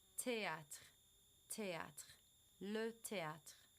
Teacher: You're actually just pronouncing the word theatre with a French accent, because remember they don't say th or the. So they're going to say it t.